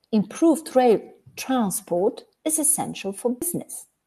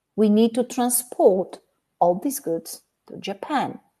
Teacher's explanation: if we put the stress on the first syllable we've got the noun transport if we put it on the second syllable we've got the verb transport